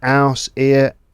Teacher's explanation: Maybe dropping the H at the beginning of words